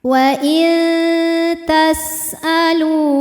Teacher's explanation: Sebab ada nun sukun yang menghadapi huruf ta, maka cara bacanya adalah bunyi nun sukun samar-samar, siap-siap menuju makhraj huruf ta disertai bunyi dengungan. Dengungnya sedikit, suara yang masuk hidung sedikit karena makhraj huruf ta ini dekat dengan nun. Wa tas'alu, lu hukum tajwidnya adalah mad tabi'i zahiri, sebab ada waw sukun didahului harokat dhammah. · Wa tas'alu, lu hukum tajwidnya adalah mad tabi'i zahiri, sebab ada waw sukun didahului harokat dhammah. Cara membaca lamnya ini adalah dipanjangkan dua harokat. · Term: ikhfa aqrab